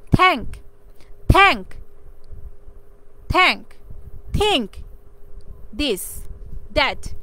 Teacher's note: টাং touches দ্য upper teeth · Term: ডেন্টাল সাউন্ড